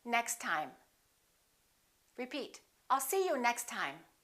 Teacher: link them now next time repeat I'll see you next time we only pronounce one T